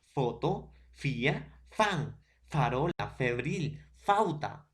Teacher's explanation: labio de abajo foto fija fan farol febril falta todo profesor el diente va a chocar con el labio inferior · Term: labios dentales, labio dental